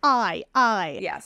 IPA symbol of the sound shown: aɪ